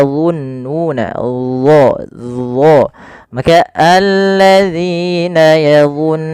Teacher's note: Yang pertama sifat istira yaitu pangkal lidah kita terangkat. Yang kedua yaitu sifat idbaqnya lidah itu lebih melekat ke langit atas. · Kemudian pada lafal yadhunnuna di sini huruf dha ya makhrajnya sama dengan huruf zal tapi ketebalannya berbeda karena huruf dha ini ada 2 sifat yang paling harus yang melekat padanya. Yang pertama sifat isti'la yaitu pangkal lidah kita terangkat, yang kedua yaitu sifat idbaqnya, lidah itu lebih melekat ke langit atas.